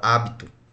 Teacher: A sílaba tônica está na antepenúltima, o que nós falamos que ela é uma pró-paroxítona.